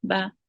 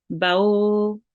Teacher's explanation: But ba maftuh, after that there is waw sakin and we make it long for 2 counts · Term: waw leen